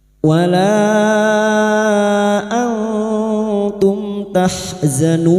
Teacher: Nun sukun bertemu ta ikfa hakiki, kita samarkan bunyi nun sukun dan mendengung selama 3 harokat.